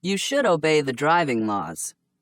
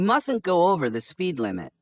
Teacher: notice the vowel sound of uh in should and must when they are pronounced quickly